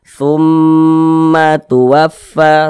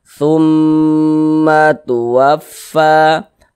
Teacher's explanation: Mim bertasydid atau nun bertasydid hukumnya ghunah musyaddadah. Cara membacanya itu dighunahkan. Jadi didengungkan. Jadi suaranya itu kita tahan, kita panjangkan sejenak. Tsumma tuwaffa tum di bagian tsumnya itu kita kita tahan kita panjangkan sejenak kita dengungkan tumma tuwaffa.